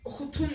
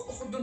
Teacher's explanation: Özündən sonra da sait gəldiyi üçün t d-ya keçib. oxutun yox, oxudun formasına düşübdür.